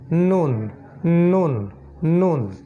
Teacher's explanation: করতে গেলে নাকটা ব্যবহার করতে হবে নুন নুন নুন ঠিক আছে মূলত নাক বন্ধ করে ফেললে নুন উচ্চারণ করা সম্ভব হবে না এটাই হচ্ছে নুনের বৈশিষ্ট্য নুন নাক বন্ধ করলে কিন্তু উচ্চারণ করা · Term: নাসিকা বর্ণ